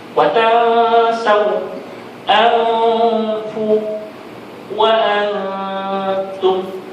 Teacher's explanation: Ikhfa ialah kita menyembunyikan nun pada sebutan huruf yang akan datang, iaitu bila mana kita bunyikan nun mati tersebut seolah-olah lidah kita sudah hampir kepada makhraj huruf yang berikutnya